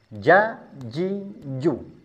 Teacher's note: Makhrajnya huruf jim adalah di tengah lidah.